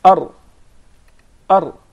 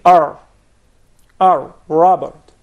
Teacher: the striking of the tip of the tongue to the gum that what really makes the difference from the English R to the Arabic rah because normally the English R is pronounced far away from this